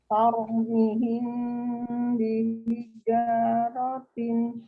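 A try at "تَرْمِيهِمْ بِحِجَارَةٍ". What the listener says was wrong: Tau, mi-nya panjang 2 harokat. Ya, masih kurang mimnya ya. Jadi untuk ngerem ngetrilnya huruf pro itu pakai bibir ya, maksudnya ditahan. Kalau masih tar, itu belum ditahan. Kayak orang cadel aja.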